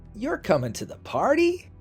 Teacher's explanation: that rising tone sounds excited or surprised.